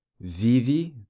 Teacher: the E pronounced like an I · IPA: /i/